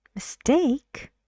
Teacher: take is stressed so you use the rising intonation on take